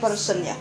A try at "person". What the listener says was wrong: Ini bukan E keras. E keras itu person. Kalau ini E lemah. Person. Jangan E keras.